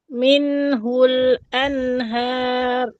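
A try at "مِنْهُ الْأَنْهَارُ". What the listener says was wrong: Masa hul tu dia tak nampak tempat dia. Dia minhul anha. Tapi masa anha, ha tu cantik. Masa hu tak cantik.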